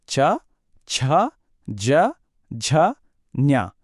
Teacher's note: అంగిలి నాలుక మన నోటి పై భాగాన్ని టచ్ చేసినప్పుడు ఈ శబ్దాలు వస్తాయి. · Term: తాలవ్యం